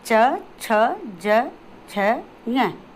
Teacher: दूसरे आते हैं जो हमारे तालव्य, यानी हमारा जो तालु का जो कठोर भाग जो होता है उससे बोले जाते हैं